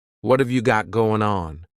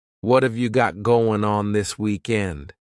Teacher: Instead, you're going to hear a reduction or a contraction of the first two words, just like we saw with the previous example. What and have are going to be pushed together.